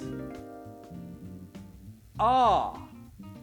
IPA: a: